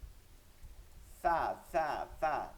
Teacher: নিচের ঠোঁটের পেট সামনের উপর দুই দাঁতের আগার সঙ্গে লাগায়া